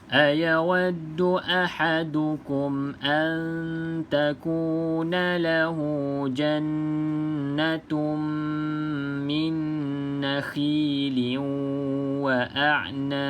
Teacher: pastikan ada lantunan sebab kita berhenti pada huruf ba. Ba ni qalqalah.